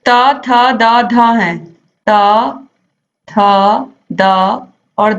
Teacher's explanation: त, थ, द और ध हैं, ये सभी इन चारों का उच्चारण स्थान दंत होता है